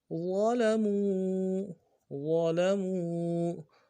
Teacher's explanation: وا کو موٹا ادا کرنا ہے، لام کو نرمی سے ادا کریں گے ، میم کو واو کے ساتھ ملانا ہے، واو مد ایک